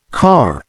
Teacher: in RP the r sound is typically not pronounced when it comes after a vowel and before a pause for instance in the word car the r is not pronounced